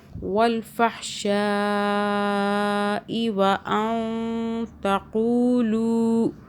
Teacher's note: اخفا کیا ہم نے نون ساکن پر